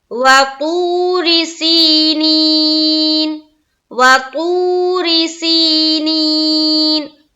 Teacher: واو ساکن اس سے پہلے پیش، ایک الف کے باقدر کھینچنا ہے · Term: واو مدہ